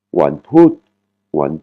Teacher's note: une voyelle courte qui est le ou et une intonation qui tombe